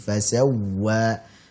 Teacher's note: Waw di sini bertasydid, kita berikan nabr, tekanan di sini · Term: waw bertasydid